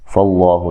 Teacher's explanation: لفظ اللہ کے لام کو موٹا ادا کرنا ہے کیونکہ اس سے پہلے حرف پر زبر ہے